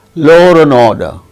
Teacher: if a word ends in a vowel sound and the next word begins also with a vowel sound r intrudes between the two words